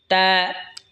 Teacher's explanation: তা জিহ্বার আগা সামনের ওপরের দুই দাঁতের গোড়ার সঙ্গে লাগা উচ্চারণ হবে তা